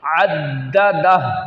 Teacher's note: عین کو دال کے ساتھ پڑھنا، ملا کر پڑھنا ہے اور دال میں سختی کرنی ہے، قلقلہ کو جماؤ کے ساتھ پڑھنا